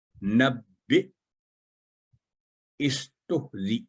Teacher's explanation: حمزہ پر سکون کی علامت ہے، جھٹکے کے ساتھ پڑھیں گے